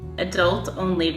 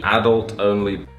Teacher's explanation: Stress on the second syllable in America, stress on the first in England.